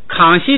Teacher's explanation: 本来是读2声，但是你因为后边有个轻声，它自然就给带下来了